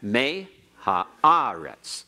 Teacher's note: the may is not as strong as the ah but the may is stronger than the ha or the rets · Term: secondary accent